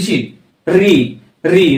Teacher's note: ऋ की ध्वनि जो आती है उसका उच्चारण स्थान क्या होता है मुर्धन्य स्वर